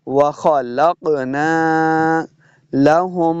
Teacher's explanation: خا اور قاف دونوں کو موٹا پڑھنا ہے. وَخَلَقْنَا لَهُم، میم مشددہ غنہ کریں گے.